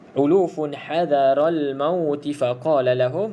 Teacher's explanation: Kalau kita sambung terus ulufun hadaral mauti faqala lahum, maka tidak ada panjang di situ